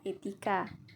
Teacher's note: E dengan bunyi depan sedang, terbuka, dan tidak bulat